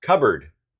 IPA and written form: ˈkʌb.ərd (cupboard)